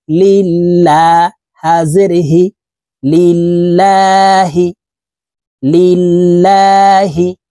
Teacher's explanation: আল্লাহ শব্দের আগের হরফে জের হলে এই লামকে পাতলা অর্থাৎ লা বলে পড়তে হয়। তো এখানে দেখুন আল্লাহ শব্দের আগের হরফে জের আছে, এই কারণে এই লামকে লা অর্থাৎ পাতলা ভাবে পড়বো, এভাবে পড়তে হবে।